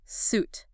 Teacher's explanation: suit with a long ooh sound like boot